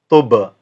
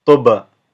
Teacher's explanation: I actually created a bounce. So that's because a ba is a qalqala letter.